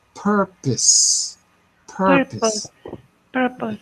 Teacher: because the second syllable has no stress it's always pronounced like an uh